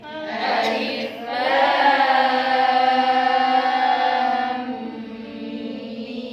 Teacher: kalau ada mim tasdid tetap harus dengung yang lama